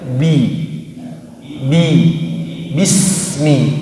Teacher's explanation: Ba juga pertama sifatnya jahar. Tidak boleh menghembuskan napas